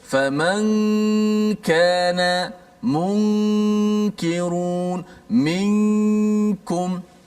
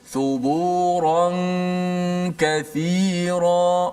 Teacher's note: Maka kalau nun bertemu dengan kaf, suaranya di hidung tu lebih mendominasi di hidung daripada huruf-huruf yang lain. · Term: Gunnah